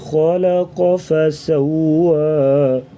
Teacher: خا اور قاف کو موٹا پڑھیں گے اور درمیان میں جو لام ہے اس کو باریک پڑھیں گے